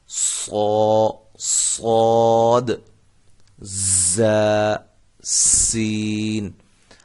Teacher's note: زبان کی نوک سامنے، اوپر، نیچے دو دانتوں کے اندرونی کنارے سے ادا ہوتے ہیں · ان تینوں حروف میں سیٹی کی آواز پیدا ہوتی ہے۔ اب فرق یہ ہے کہ صاد کی جو سیٹی ہے یہ موٹی ہوگی، زا اور سین ان کی سیٹیاں جو ہیں وہ سیٹی کی جو آواز ہے وہ باریک ہوگی۔